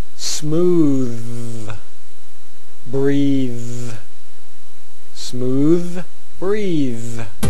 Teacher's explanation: push the tongue out beyond the teeth push the air out over the tongue under the teeth